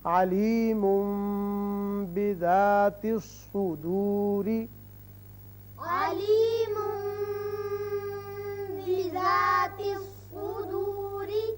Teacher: اقلاب کی وجہ سے ایک الف کے برابر آواز ناک کے بانسے میں ٹھہرتی ہے